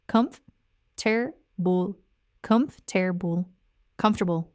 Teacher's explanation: Linguists call it a process called syncope, where unstressed syllables in the middle of a word get reduced or dropped altogether in natural speech.